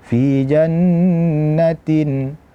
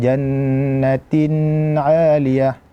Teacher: Gunnahnya ada namun tidak sempurna. Fi jannatin tidak panjang sekali, jannatin 'aliyah. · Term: al-izhar al-halqi